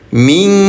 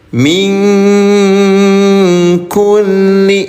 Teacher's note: setelah bertemu dengan huruf kaf maka bacaan nun sukunnya disamarkan ming. Jangan lupa ya tahan dua dua ketukan min kulli. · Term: ikhfa